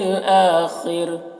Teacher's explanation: آخری حمزہ میں کھڑا زبر ہے جو الف مدہ کی طرح ہے اور خا کو پر پڑھنا ہے اور را کو یہاں پر باریک پڑھیں گے، وقف کریں گے تو را کا زیر سکون سے بدل جائے گا